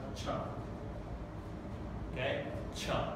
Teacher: This means it's a mix between fricative and plosive, right? So if you try to pronounce the t and the sh, the t and the sh together, you'll get a ch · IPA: tʃ